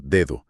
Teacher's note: en lugar de hacer una consonante dura, tensa y explosiva, la lengua apenas roza los dientes. Como que acaricia el diente. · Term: lenición